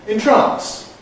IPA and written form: ɪnˈtrɑːns (entrance)